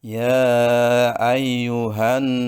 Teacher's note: itu ada Nun bertasjid maka harus dibaca dengan gunah atau berdengung ya ayyuhanasu sekaligus na itu Mengandung hukum bacaan Mad Thobi'i dibaca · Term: gunnah